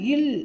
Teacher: நாவினது ஓரங்கள் தடித்து தடவுவதால் பிறக்கின்றது